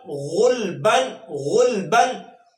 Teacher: غین اور گاف، گاف جو ہے یہ اردو کا حرف ہے، اردو کے حروف تہجی میں سے گاف آتا ہے، لیکن جو غین ہے یہ پیور عربی کا ایک حرف ہے جس کو آپ گاف نہیں پڑھیں بلکہ غین نرمی کے ساتھ یہ حلق سے ادا ہوتا ہے